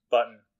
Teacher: Then you have un, which most of us would just say is N. Like, there's not an actual vowel in there. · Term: syllabic N